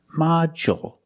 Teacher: With module, the stress is on the first syllable. So the second syllable is short. Module. And we see the D makes the J sound, like juice and jump.